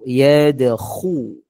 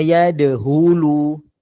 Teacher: Nampak macam sebut kha tepat tu. Dia kena sampai kita rasa macam nak buang kahak. Rasa kering kat tekak. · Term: huruf kha